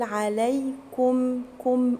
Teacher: حرف الكاف مضموم والميم اللي وراه دي هتبقى مظهرة، يبقى اقول عليكم كم، اضم الكاف كويس.